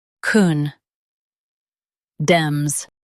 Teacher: Stress the dem syllable and keep con soft.